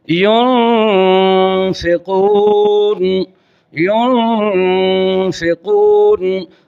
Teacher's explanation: نون پر آپ اپنی زبان کی نوک اوپر والے جو 2 دانت ہیں ان کے پیچھے جڑ کے ساتھ سختی سے نہیں لگائیں گے، زبان کی نوک نرمی سے لگائیں گے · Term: اخفاء مع الغنہ